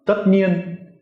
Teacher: Now, because the tất is a hard sak, it doesn't have that low rising quality at all. It's just a high, sharp tone.